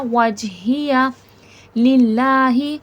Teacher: वजहिया लिल्लाही अल्लाह जलालहु लफ़्ज़ से पहले ज़ेर है। अल्लाह जलालहु लफ़्ज़ फ्लैट बारीक पढ़ा जाएगा, मोटा नहीं किया जाएगा